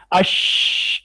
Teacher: देखिए ऐसे करें, अश, ये ऊपर जाके लगी हुई है, ये भी जुबान का दरमियानी हिस्सा तालु के दरमियान में लगा है, इससे शीन भी निकली है